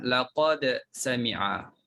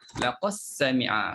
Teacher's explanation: Tapi bagi bacaan Hamzah dibaca dengan idghamkan dal dalam sin